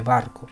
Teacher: se pronuncia B, con sonido bilabial explosivo, tal como la B española de barco